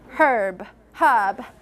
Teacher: in British English, this initial H needs to be pronounced